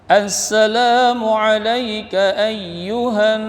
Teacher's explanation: nun tasydid, tajibul gunnah, dengung, tahan sedikit